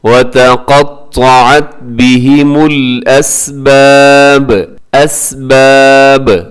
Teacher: وَتَقَطَّعَتْ بِهِمُ الْأَسْبَابِ، اسباب لکھا ہوا لیکن وقف کریں گے تو آخر میں با ساکن ہو جائے گا، اور جب با ساکن ہوتا ہے تو پھر با کو قلقلہ کیا جاتا ہے